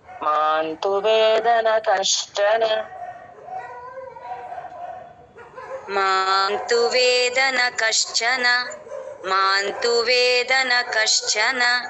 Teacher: చ కి మహాప్రాణం రాకుండా చూసుకోవాలండి మహాప్రాణం పెట్టేస్తూఉంటారు గాలి రాకూడదు కొట్టినట్టుగా ఫోర్స్ గా చెప్పకూడదు మాంతువేదన కష్టన మాంతు వేదన కశ్చన మాంతు వేదన